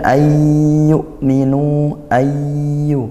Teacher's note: Masuk dan didengungkan. Masuk ke huruf ya tanpa bunyi nun dan juga di didengungkan. · Kemudian ayyuminu, ini nun sukun bertemu ya. Nah, dibaca idgham bi gunnah, masuk dan didengungkan, masuk ke huruf ya tanpa bunyi nun dan juga didengungkan. Ayyuminu, hamzah sukun sebagaimana yang tadi kami ingatkan, dikuatkan ya. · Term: idgham bighunah